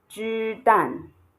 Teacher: you have a flat tone and a falling tone